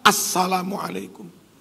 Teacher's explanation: Al ketemu sin, idgham syamsiyah